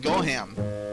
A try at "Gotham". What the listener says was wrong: Gotham. Gotham. It's pronounced Gotham. It's a TH. GOTHAM. Not Goham.